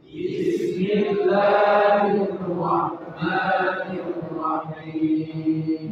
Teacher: Alif-alif yang ada di sini itu mad tabi'i, dua harakat saja.